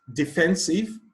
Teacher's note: defensive the stress is on the second syllable